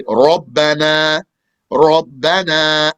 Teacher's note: So heaviness, ra, is made heavy when the ra has a fatha